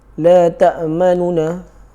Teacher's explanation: bacaannya cepat dan tidak mensabdukan nun tersebut. Dia buang sabdu tersebut. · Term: raum